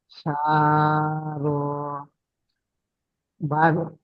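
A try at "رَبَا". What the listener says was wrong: আচ্ছা, এখানে কিন্তু প্রত্যেকটা টান একই হয়ে গিয়েছে। র টান দিয়েছেন, বা টান দিয়েছেন, কিন্তু র টান হবে না, বা টান হবে না। র যাবার র, বা যাবার বা, র বা র বা র বা, এই দুটো আপনি পড়েন। র বা, এই দুটো পড়েন। র বা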